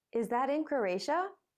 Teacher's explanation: ask a question you already have some idea of the answer you're asking a question to check something or to confirm that your idea is right in this case the question has a rising tone